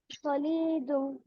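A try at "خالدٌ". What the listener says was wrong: লামে টান নাই, খতে টান আছে। খালিদুন।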